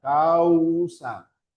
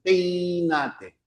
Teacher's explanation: Luego tenemos al decreciente que es al revés. Ya es primero aparece la vocal abierta con fuerza de voz o tilde y luego viene la vocal cerrada, vocal abierta más vocal cerrada. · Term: diptongo decreciente